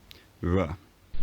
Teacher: some people, particularly working class Londoners, use this labiodental approximant